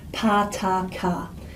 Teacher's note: the lower central vowel which is the most common vowel in all the languages in the world